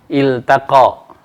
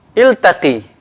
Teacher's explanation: Maka semuanya lamnya, ya, dibaca jelas, ya. Jelas karena setelahnya adalah huruf ta, ya.